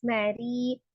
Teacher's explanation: ada ro-nya kasroh, maka dibacanya tipis